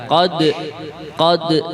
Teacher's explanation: Dal ini termasuk kalau dalam makharijul huruf, sifatul huruf, dal adalah huruf qalqalah. Jadi kalau dia disukun itu ada semacam pantulan.